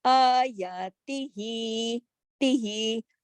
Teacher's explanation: صرف تا زیر تی جو ہے وہ ایک حرکت، باقی دونوں الف کی مقدار کے برابر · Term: کھڑا زبر